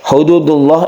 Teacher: Hududullah ini adalah lafzul jalalah yang dibaca tebal karena sebelumnya ada dhammah. Tebal itu disebut tafkhim atau mufakhomah.